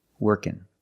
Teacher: So the ng can make the n sound.